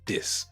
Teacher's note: dropping the TH or swapping it out for a T or a D. Take a word like this, you may hear dis.